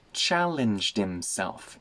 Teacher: The H in himself disappears.